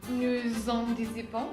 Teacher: no es el sonido s, es más el sonido z.